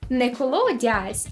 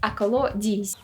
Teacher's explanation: носовий е, який у літературному варіанті міняється на а, тобто я, тут часто звучить як і